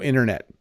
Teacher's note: the tea at the end is hard but the one in the middle slips to a d the internet I almost even don't say the D